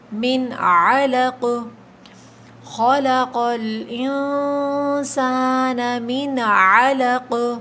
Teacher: حروف حلقی آ جاتا ہے تو غنہ نہیں کیا جاتا، تو یہاں پر عین ہے تو ہم غنہ نہیں کریں گے۔ من علق، خلق الانسان من علق، ٹھیک ہے، آخر میں قاف پہ قلقلہ ہوگا۔